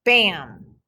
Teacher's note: Okay, the M changes the sound of the short A. You don't really hear the A when you say bam. You just hear that am sound.